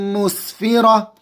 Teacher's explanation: سین اچھے سے نکالیں گے، فا اچھے سے ادا کریں گے، اوپر کے دانتوں کا کنارہ اور نیچے کے ہونٹ